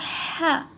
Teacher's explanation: یہ بڑی ہا، اس کو حلق سے ادا کریے